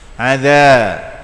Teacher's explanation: Kalau zal, lidah di depan gusi ataupun gigi. Di hujung gusi.